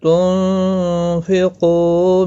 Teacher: بعد حروف اخفا کفا حقیقی ہوگا، گنہ کے ساتھ پڑھیں گے، قاف مستعلیہ ہے، پر پڑھا جائے گا ، او واو مدہ ہے، ایک الف کی مقدار کے برابر